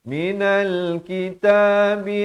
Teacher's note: alif lam qamariyah, lam dibunyikan.